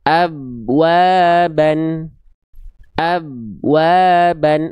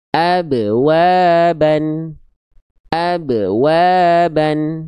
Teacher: Maka ketika ba dilafalkan dia harus memantul. Khususnya ketika su sukun atau ma atau mati. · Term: qalqalah